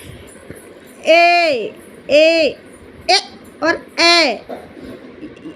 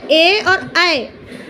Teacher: कंठ और तालु दोनों का मेल से बोलने वाले शब्द हैं ए और ए। इनको हम बोलते हैं कंठ तालव्य।